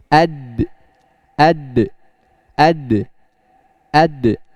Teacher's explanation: huruf dal adalah sifatnya jahar dan syiddah, syiddah. Ya, jadi ad, ad, ad, ad tanpa ada nafas, ya, tanpa ada nafas maupun suara.